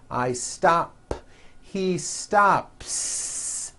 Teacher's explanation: I stop ends with an unvoiced p